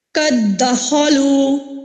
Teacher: جیسے کہ دیکھیے قد دخلوا، یہاں پہ دیکھیے قد، دال جو ہے ساکن ہے، ٹھیک ہے، مدغم ساکن ہے، اس کو ہم نے مدغم فی میں داخل کیا، اگلے والے دال میں داخل کیا تو یہ مشدد لگ کے داخل ہوا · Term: ادغام صغیر